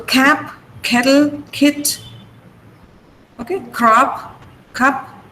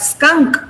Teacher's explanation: In the initial position, generally they are aspirated and only voiceless sounds are aspirated